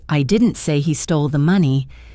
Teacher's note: the emphasis on stole could mean that maybe he borrowed it or was given it, but he didn't steal it